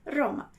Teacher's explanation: Vibrante é porque a língua ela vai encostar no céu da boca e vai descer por algumas vezes repetidas, ok? Às vezes um pouco mais, às vezes um pouco menos, mas a gente vai ver isso agora. · Esse som de R, ele tem uma característica muito particular dele. Ele vai ser sempre vibrante. Às vezes um pouquinho mais, às vezes um pouquinho menos, mas sempre vibrante.